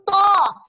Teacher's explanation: Hanya saja bedanya huruf to itu naik pangkal lidah kita waktu menyebutkannya. Sama seperti qaf tadi ya, namanya huruf-huruf isti'la.